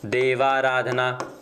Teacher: जैसा कि सूत्र में आपको दर्शाया गया है कि अ के बाद में आ होगा तो भी स्वर क्या होगा, दीर्घ आ ही होगा। तो अ प्लस आ जुड़कर इनका दीर्घ रूपांतरण क्या हो जाएगा, आ हो जाएगा। तो देव प्लस आराधना की जब हम संधि करेंगे तो शब्द क्या हो जाएगा, देवाराधना।